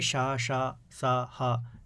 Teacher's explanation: वायु जो निकल रही है वो घर्षण करते हुए, संघर्ष करते हुए निकल रही है, इसलिए इनको हम क्या बोलते हैं, ऊष्म या संघर्षी व्यंजन बोलते हैं।